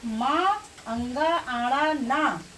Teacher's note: इन सब का उच्चारण स्थान क्या होगा, नासिका होगी, अर्थात अनुनासिक वर्ण होगा।